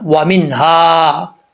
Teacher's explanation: واؤ کو پڑھتے وقت ہونٹ گول کریں گے، نون کے اندر جو ہے وہ اظہار حلقی ہے، ظاہر کر کے پڑھیں گے، ہا بھاری ساؤنڈ کے ساتھ آئے گا، اس کو بریک نہیں پڑھنا، وَمِنْهَا، ٹھیک ہے۔